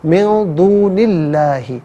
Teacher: ما قبل نون کے نیچے زیر ہے تو اسم اللہ کی حرف لام کو باریک کر کے پڑھا جائے گا۔